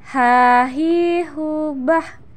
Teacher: Huruf H ini dikeluarkan dari tengah tenggorokan kita. Ketika dilafalkan persis seperti kita melafalkan kata ayah, sah.